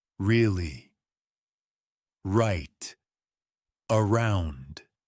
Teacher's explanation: English R is very soft. Your tongue doesn't touch the top of your mouth.